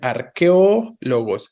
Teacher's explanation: ¿Cuál es la vocal tónica específicamente? No es la E, ¿no? Sino es la O.